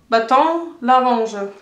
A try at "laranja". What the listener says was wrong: Ja, aber das ist ein bisschen Französisch. Du hast mit Französisch also. Aussprache gesprochen. Baton, man sagt nicht laranja, man sagt laranja. L-A-R-A-N-J-A.